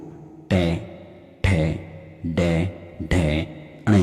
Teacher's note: ये तालु के पीछे से और गले के मतलब कंठ के आगे से निकलती हैं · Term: मूर्धन्य ध्वनियाँ